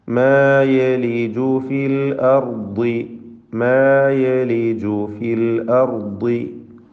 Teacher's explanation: തഫ്ഖീം ചെയ്ത് ഉച്ചരിക്കണം. ളാദിന് കസ്റാണ്, കുറഞ്ഞ തഫ്ഖീം മതി